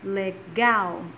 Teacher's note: observe que a última sílaba legal ela vem com mais força